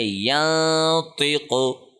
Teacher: مثال کے طور پہ یہاں پہ اس نون ساکن کے بعد تو آ رہا ہے جو کہ حروف حلقی میں سے نہیں ہے، ہم اس کو پڑھیں گے ینطقو، ہم نے زبان کہیں پہ ٹچ نہیں کی، نون کو ناک میں پڑھا ہے، چھپا کے پڑھا ہے اور 1 سیکنڈ لمبا کر کے پڑھا ہے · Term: اخفا